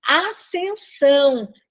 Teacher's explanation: é como se nós tivéssemos apenas um S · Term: dígrafo